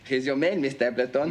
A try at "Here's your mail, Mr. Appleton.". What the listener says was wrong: Mail. You've got to emphasize mail. That's the important word. Now try it again.